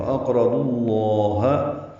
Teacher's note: لام اسم جلالہ کو پر پڑھیں گے، اس کا کھڑا زبر بھی پر پڑھا جائے گا